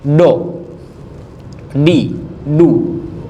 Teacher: ini ujung lidah kita nempel di bagian depan atas atau gusi, dekat gusi